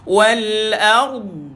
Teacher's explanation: Tuan-tuan, tepi lidah je. Tepi lidah. Sentuh gigi geraham kiri ataupun kanan. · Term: huruf dad